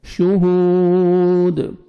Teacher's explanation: کھینچیں گے واو مد ہے واو جزم سے پہلے پیش ہے سٹاپ کریں گے دال ساکن ہو جائے گا قلقلہ کریں گے ڈبل ساؤنڈ آئے گا